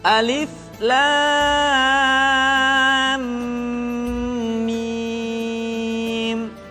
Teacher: lam dibaca panjang la selama 6 harakat kemudian mim dibaca ditahan tidak boleh tergesa-gesa karena setelah mim mati diikuti oleh huruf mim sehingga berlaku hukum